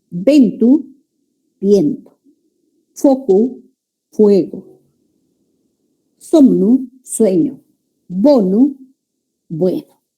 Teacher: Las vocales E y O breves y tónicas. Tónicas significa que ahí recae la mayor fuerza de voz. Pasaron a ser diptongos en castellano.